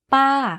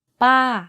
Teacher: You can hear from my voice that my pitch went up and then down very slightly. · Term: falling tone